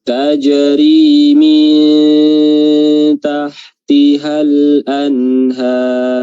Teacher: Nun ke ha itu tidak ada jedah ya, langsung